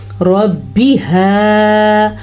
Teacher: میں نے را کو پر پڑھا ہے کیونکہ را کے اوپر زبر ہے، اور میں نے ہا کو درست لفظ سے پڑھا ہے کیونکہ ہا چھاتی سے نکالا جاتا ہے، اس کو حلق کے آخری حصے سے نکالا جاتا ہے